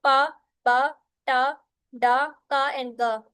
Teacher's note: इसमें क्या होता है कि एयर कंप्लीटली जो है वो स्टॉप हो जाती है और फिर सडनली क्या होती है, रिलीज होती है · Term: प्लॉसिव साउंड